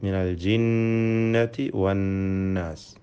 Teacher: അന്നാസ്, ഇതിലെ നൂൻ മുഷദ്ദദ, ഷദ്ദ നൽകപ്പെട്ട നൂനിനെ മണിച്ചുകൊണ്ട് ഉച്ചരിക്കണം. 2 ഹറക്കത്തിൻ്റെ അളവിൽ ഗുന്നത്ത് നൽകണം എന്നർത്ഥം